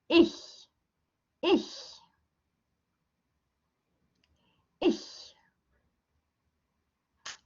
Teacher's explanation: you don't press your tongue up super, super tight, but you leave a teeny tiny bit so that the air can pass through